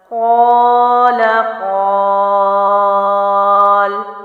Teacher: میں نے پہلے اس کو الف مد کے مطابق پڑھا اور اس کے بعد وقف میں 3 الف کے مطابق لمبا کر کے پڑھا